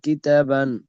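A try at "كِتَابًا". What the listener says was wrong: একটু তাটা আর একটু টান দেন, কিতাবান।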